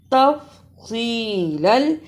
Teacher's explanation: صاد اور سین دونوں کی آواز میں فرق ہے، صاد کو موٹا پڑھنا ہے